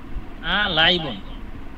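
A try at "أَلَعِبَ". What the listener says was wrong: লাইবন কেন? লাইবা ঠিকই তো আছে।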